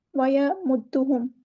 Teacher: ویمدہم، ویمدہم میں، ویمدہم، میم کی پیش کو اچھے سے ادا کیجیے گا، دال مشدد ہے تو اس کو 2 بار ادا کریں گے، ویمدہم نہیں پڑھنا، ویمدہم، ایک بار دال کو ساکن کرنا ہے، ایک بار اس کی حرکت کے مطابق پڑھنا ہے۔